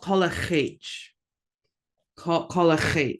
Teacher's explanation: Got that glottalized L.